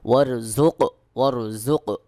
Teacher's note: কফ ত বা জিম দাল এই পাঁচটি হরফে যদি সাকিন থাকে অবশ্যই কলকলা বা আওয়াজকে একটু ধাক্কা দিয়ে উচ্চারণ করতে হবে